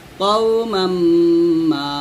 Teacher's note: কাউ বলা যাবে না, ক বলতে হবে